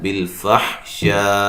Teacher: وقف کی صورت میں حمزہ کو ساکن کر دیں گے، اور یہ شاہ پہ جو مد ہے یہ مد واجب ہے